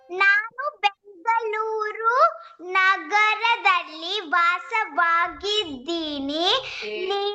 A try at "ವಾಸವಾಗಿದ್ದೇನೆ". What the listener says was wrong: ದೀನಿ ಅಲ್ಲ ದೇನೆ ವಾಸವಾಗಿದ್ದೇನೆ. This is okay, but this one you read again. Not dini. ದೇನೆ. ವಾಸವಾಗಿದ್ದೇನೆ. ವಾಸವಾಗಿದ್ದೇನೆ. So ವಾಸವಾಗಿದ್ದೇನೆ.